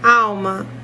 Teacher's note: O al não tem acento gráfico, mas é a sílaba mais forte